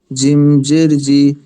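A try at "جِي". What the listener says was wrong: ইয়াতে জি, এখানে এক লিফ টান আছে না? ইয়া ইয়া জেরের পর ইয়া থাকলে কি হয়? রসমেলা ইয়া থাকলে, তা আপনি টানছেন না তো। জিম ইয়া জেরে জি, জিম ইয়া জবরে যাই, জি জি যাই। আপনি স্পষ্ট করে শান্তভাবে বলুন।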